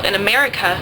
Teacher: in America, the first sound and the last one are schwas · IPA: ə, [ə]